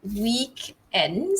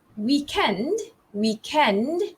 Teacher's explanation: the British English version, which is the stress falls on the second syllable.